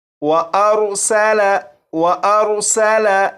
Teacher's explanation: سین کو سیٹی کی آواز کے ساتھ پڑھیں گے